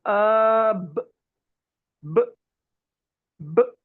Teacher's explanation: For example, I'm making this sound and I close my lips b. You see the impact is on the lips. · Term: lip letters